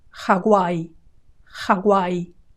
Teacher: Hawaii, Hawaii, with a very strong initial G, Hawaii, and the W has a GU sound